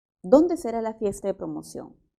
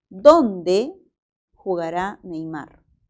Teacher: El tono final es descendente.